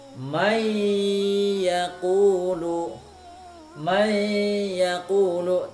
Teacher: ditahan dua harokat disertai dengan ada bunyi dengung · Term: Idgham Bighunnah